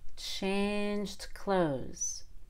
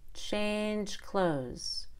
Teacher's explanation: it's hard to distinguish between the present tense and the past tense when we have a j sound and then a d and then a consonant so now we let out a little air on that D